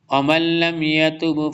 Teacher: ومن لم، نون ساکن کے بعد لام آ رہا ہے، ادغام یرملون ہوگا۔